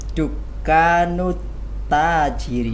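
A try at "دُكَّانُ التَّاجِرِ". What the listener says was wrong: Bagus. Dukanut. Bukan dukanul. Nah, di sini alif lam syamsiyah.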